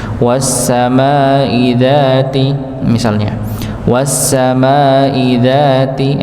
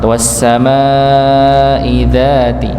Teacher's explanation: maka mimnya dipanjangkan 4 harokat, dzalnya dipanjangkan 2 harokat.